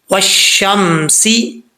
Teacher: واؤ کو جب شین سے ملائیں گے تو بیچ میں جو الف اور لام ہے یہ گر جائے گا